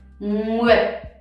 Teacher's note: The dot makes it super short. That means that you barely can hear the T. You still have to shape it though.